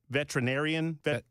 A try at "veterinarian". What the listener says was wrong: Veterinarian. I think you're right. I think it's veterinarian.